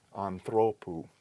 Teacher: This is a diphthong, so it's long, so we can't go all the way back. We're going to have to put the accent on the penultimate syllable, but we have a long in the final position, so we have to use the acute, anthropou.